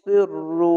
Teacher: সদটি মোটা করে সিররু, মোটা করে একটু পড়বেন